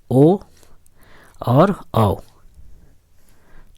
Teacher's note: ये दोनों वर्ण का उच्चारण स्थान जो है कंठ और ओठ दोनों से होता है, इसलिए इसको कंठोष्ठय कहते हैं।